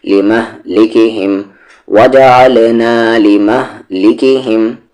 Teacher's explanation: لام پر زیر لی، ما کو ہم مہ، لمہ، لام پر زیر لی، کاف پر زیر کی، لمہ لی کی، یہ کما میں ہم، لمہلکہم وجعلنا لمہلکہم، یہاں پر اس ہی کو اس میم میں ملائیں گے تو پھر غنہ ہوگا، آواز کو ناک میں رکھ کر پڑھیں گے